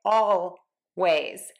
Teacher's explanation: Native speakers will use a very dark L here and say always